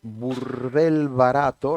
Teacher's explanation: burdel barato repite la bilabial, que es una consonante muy sonora. Hay la vibrante R, burdel barato, y las vocales más abiertas, la O y la A, son las que más se repite, que son las que dan más resonancia.